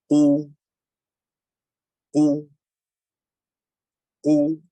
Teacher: With a dhamma, qu, qu. Your lips should be circled. The furthest part of the tongue should be raised, and the throat should narrow.